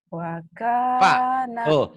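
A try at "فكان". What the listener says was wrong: Kalau wa jadi pak, jadi wa. Fa, fanta f, fakana. Virus, fa, f. Fanta f, fakana. Fakana akibatahuma.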